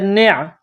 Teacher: عین گلے کے درمیان سے زور لگا کر عین کو نکالا جاتا ہے